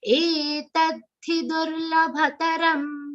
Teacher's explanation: In this entire charan, only A is a long sound. Rest everything is short. So that entire, this first letter you have to say long, rest everything should be short.